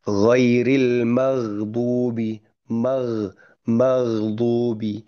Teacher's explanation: Jadi ketika sukun, kalau ghoinnya sukun, itu sebetulnya masih mengalirkan suara sebetulnya. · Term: huruf ghain, ginnya sukun